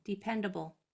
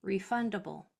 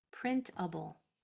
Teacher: It sounds like it should be U-B-L-E, but all that's happening there is the A is changing to the schwa sound because it's in the unstressed or unaccented syllable